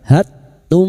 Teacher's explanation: mim sukun bertemu mim idgham mimi, memasukkan atau mentasdidkan 2 mim disertai mendengung selama 3 harakat